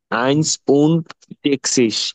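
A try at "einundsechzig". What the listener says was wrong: কিন্তু আইনস না, আইনস না। আমি ওই সবগুলাতে শুধু এসটা বাদ যাবে, শুধু আইন থাকবে, এসটা বাদ যাবে কিন্তু। এই যে আমি এখানে কিন্তু এস লিখি নাই, এদিকে খেয়াল করেন, আমি কিন্তু এখানে এস লিখি নাই।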